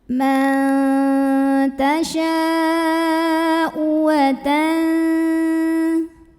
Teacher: Hamzahnya yang pada kata tasya'u. Maka shinnya ini dipanjangkan, boleh 4, boleh 5 harokat. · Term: mad wajib muttasil